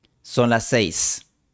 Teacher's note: Sería artificial pronunciar son las 6. Es más natural fusionar las dos s en una s ligeramente larga o de duración normal.